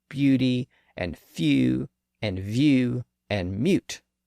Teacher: u has a little Y sound at the front and in fact the long u sound is actually this u sound